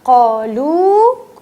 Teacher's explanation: اب آپ یہ دیکھیں, قالو کھینچا, لام والو کو بہت جلدی نہیں پڑھنا ہے, لام والو کے بعد مد لگی ہے, اسے کھینچنا ہے